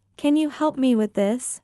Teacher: notice the rising intonation at the end of the question and try to reproduce it exactly when you speak.